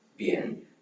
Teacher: பி sound strong ஒரு காற்று வேகமா அழுத்தமா வெளியே விட்டு ப்ரொனவுன்ஸ் பண்ணணும். லைக் இப்ப வெடிப்பொழி மாதிரி.